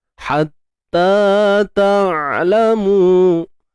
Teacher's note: Ha pedas, sempitkan tengah kerongkong kita.